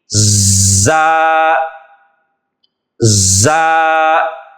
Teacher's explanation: اس میں تھوڑی سی سیٹی کی طرح آواز نکالی جاتی ہے، یہاں پر مخرج بھی چینج ہو جاتا ہے اور آواز بھی تبدیل ہو جاتی ہے. ذال کی طرح نرمی سے نہیں بلکہ اس میں سیٹی کی آواز آئے گی